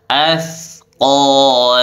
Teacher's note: Q pangkal lidah dinaikkan di tempat langit-langit yang lunak